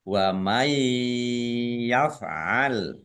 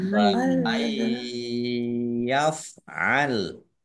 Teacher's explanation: Nun sukun bertemu dengan huruf ya, bacaan idgham bi gunnah. Masuk mendengung, yaitu mendengung ya. Ditahan kira-kira 2 harokat biar tampak dengungannya.